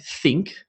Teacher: my tongue is below my two top teeth and there's no sound through my throat it's purely coming from my teeth in the air